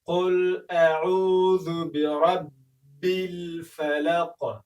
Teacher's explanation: برب الفلق وګورئ په برب کې را زوه لري باید ډک ادا شي او په با باندې زور راشي. برب د فلق د کلمې په وروستیو کې د قاف توری راغلی دی چې د قاف توری د قلقلې له تورو څخه دی. باید قلقله پکې وشي، یعنې داسې ونه ویل شي چې برب الفلق فلق، یعنې په مخرج کې باید وښوري، ټکان ورکړل شي.